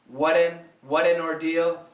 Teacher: in American pronunciation, what an, the flap T sounds like a D, not an R, an American R.